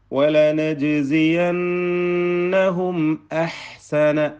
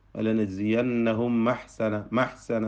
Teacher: ഇവിടെ ശ്രദ്ധിക്കേണ്ടത് പലപ്പോഴും ആളുകൾക്ക് വരുന്നൊരു അബദ്ധം, വലനജ്സിയന്നഹും ഹും എന്ന് പറഞ്ഞിട്ട് ചുണ്ടിനെ പൂർണ്ണമായും പൂട്ടുക, അവിടെ എന്താ പറയുക, അടക്കുക, ചുണ്ടുകൾ ചേർത്ത് വെക്കുക. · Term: ഇൽഹാർ ഷഫവി